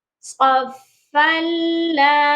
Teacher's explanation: اب یہاں پر آپ دیکھیے کہ فا کے اوپر جو تنوین تھی اس کو ہم نے لام کے ساتھ ملایا ہے، ادغام کیا ہے، لیکن غنہ نہیں کیا